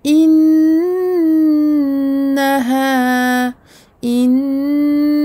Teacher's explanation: On n'oublie pas de prolonger de 2 temps la fatha du ha.